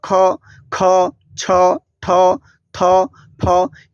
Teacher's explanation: तो यहां पे ये देखो कि इसमें बोलने में ज्यादा वायु निकल रहा है तो इसको क्या कह देंगे हम लोग महाप्राण कह देंगे उसके